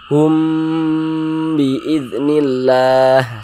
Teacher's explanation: Jadi humnya itu kita tahan, ya, kita panjangkan sejenak karena dia didengungkan. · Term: ikhfa syafawi